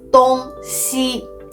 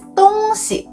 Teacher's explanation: with the neutral tone on the second character, it actually means things or stuff